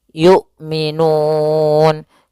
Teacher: hamzah memiliki sifat jahar dan sifat syiddahnya dan jelas ya, maka suaranya harus tertahan nafasnya dan tertahan suaranya